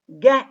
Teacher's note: get is voiced because it is produced when the vocal cords are vibrating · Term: voiced velar stop